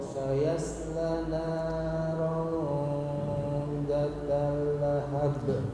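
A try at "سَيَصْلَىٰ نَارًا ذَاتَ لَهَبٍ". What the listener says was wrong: Oke, panjangkan dulu ya Pak lamnya. Sayasla naron zata lahab.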